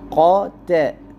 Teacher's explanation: تا کو باریک اور قاف کو پر پڑھیں گے